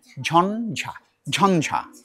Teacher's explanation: এই তুমি যখন তালুতে গিয়ে জিহ্বাটা তুমি টাচ করবে, লাগাবে, তখন একটু নাকে আসবে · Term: তালব্য বর্ণ ঝ